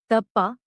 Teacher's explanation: The tip of the tongue touches the base of the upper teeth resulting in dental sounds · a softer version of ta, as in tap, but with the tongue touching the upper teeth, instead of the roof of the mouth. It is used in the word tappa, meaning penance.